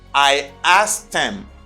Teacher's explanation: And for the past, you say I asked him. You don't pronounce H, you just say I asked him.